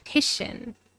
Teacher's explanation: So the third syllable has the primary stress. But notice that the first syllable has some Primary stress, secondary stress.